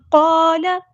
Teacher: قال لام کے زبر کو لمبا نہیں کرنا